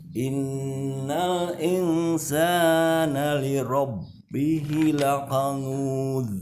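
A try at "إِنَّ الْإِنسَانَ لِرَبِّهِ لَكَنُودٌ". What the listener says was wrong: Bihinya panjang, li rabbihi lakanud. Sama yang kurang sedikit kesalahannya di qalqalahnya. Qalqalah, ingat qalqalah sudah belajar kita punya sifat mantul ya. Sifat qalqalah itu dipantulkan, dan ketika kita memantulkan suaranya itu harus sama seperti ketika dia berharokat ya.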